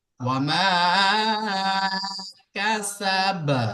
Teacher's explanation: বার উপরে সাকিন করা হচ্ছে আয়াতের শেষে, তো বায়ের আওয়াজটা ফিরে আসবে। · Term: হুরুফে কলকলা